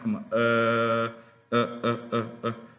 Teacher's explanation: la chua es muy relajada cuando hacemos el sonido la boca está totalmente relajada y la lengua está como posicionada en el medio de la boca Como así no está acá arriba no toca abajo entonces suena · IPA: ə